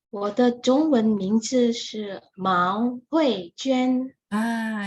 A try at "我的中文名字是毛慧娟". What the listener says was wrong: ya, mau nada dua ya.